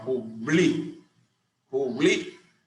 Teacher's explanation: s esta termina en una vocal por tanto no se acentúa su mayor fuerza e intensidad cae sobre la penúltima sílaba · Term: grave o llana